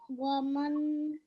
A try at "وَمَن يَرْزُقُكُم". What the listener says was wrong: make sure, well, A445, make sure that you don't pronounce this noon. وَمَن يَرْزُقْكُم, okay?